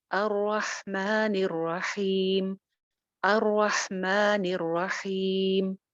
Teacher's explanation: را زبر کے ساتھ ہے، موٹی ہو جائے گی. را پہ شد ہے، را 2 مرتبہ پڑھی جائے گی.